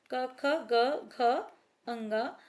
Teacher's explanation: कवर्ग जो है वो क्या कहलाते हैं कंठे क्योंकि इनका उच्चारण कहां से होता है कंठ से होता है गले से होता है